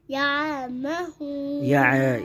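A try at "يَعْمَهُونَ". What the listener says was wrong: یہ عین آپ کا جو ہے نا موو ہو رہا ہے, بالکل ساکن رکھ کے. یعمہون یعمہون.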